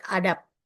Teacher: we usually pronounce the sounds B in the final position with P sounds. For example, the word adab, we pronounce it adab.